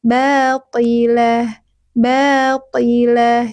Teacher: huruf-huruf tebal teman-teman ketika kasrah tetap tebal ya jadi pangkal lidahnya tetap terangkat